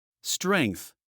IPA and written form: strɛŋθ (Strength)